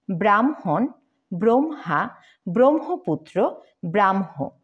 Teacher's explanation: হ এর সাথে ম যুক্ত হলে প্রথমে ময় হসন্ত এবং তারপর এম এইচ উচ্চারিত হয়